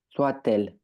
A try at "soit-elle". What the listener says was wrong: Soit-elle. On fait bien, tu peux bien faire la liaison, pardon. Toi, tu m'as dit soit elle. Faut bien faire la liaison, surtout que là, tu as le petit tiret qui te le dit.